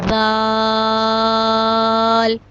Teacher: جب زبان کی نوک اوپر والے دو دانتوں کی نوک سے لگے گی تو ذال ادا ہوگا۔ ذال کو بھی ہم 5 الف کے برابر لمبا کرتے ہیں، ذال۔